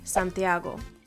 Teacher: The second to last vowel in Santiago is the A, so that's where the most emphasis is going to be.